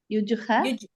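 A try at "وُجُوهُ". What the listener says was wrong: என்ன யுஜுகு, எங்க ஏன் வந்திருக்கு? அந்த லெட்டர் ஃபர்ஸ்ட் லெட்டர் என்னது? வாவ் தம்மா உ, உஜூஹ்.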